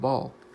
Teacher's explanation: this is the dark l that we have in English like in the word ball it can be transcribed in the international phonetic alphabet as such